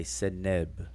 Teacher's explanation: they decided to put a short E vowel sound between the consonants of the Egyptian words